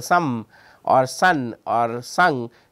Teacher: final sounds in English, for example, some or sun or sung uses the nasal cavity.